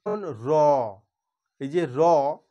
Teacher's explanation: হবে তখন এটার একটা উচ্চারণের সময় একটা কম্পন অনুভূত হবে কম্পন অনুভূত হওয়ার ফলে যে ধ্বনিটা উচ্চারণ হবে সেইটাকেই বলা হচ্ছে কম্পিত ব্যঞ্জন ধ্বনি